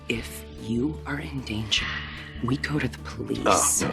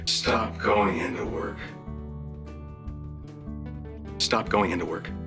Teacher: the extremely common american native tendency to pronounce the word to as da